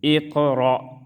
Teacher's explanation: حمزہ قاف زیر اق، را حمزہ زبر را، اقرا. اقرا میں قاف قلقلہ، را کو موٹا پڑھیں گے